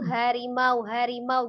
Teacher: H besar kan dari tenggorokan bagian bawah, H kecil dari tenggorokan bagian Bagian tengah.